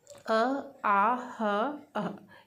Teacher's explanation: आप इनको उच्चारित करके देखिए, ये सीधी कंठ से निकल रही हैं और इनके उच्चारण में कहीं भी अवरोध उत्पन्न नहीं हो रहा है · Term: कंठे ध्वनियाँ